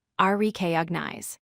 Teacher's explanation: Place stress on the first syllable